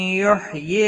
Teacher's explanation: یحیی یا مدہ ہے، ایک الف کے برابر کھینچ کر پڑھیں گے